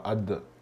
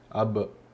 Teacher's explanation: abbiamo detto, rischio del fatto è come uno che dice ada, non è ada ma ad, senti che ti fermi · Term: qalqala